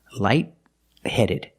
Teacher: The T in light is a stop T, light-headed. You put the tongue up to stop the air, but you don't release the T.